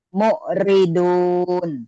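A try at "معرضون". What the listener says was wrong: ainnya kurang neken. Mu'ribun. Mu'ribun.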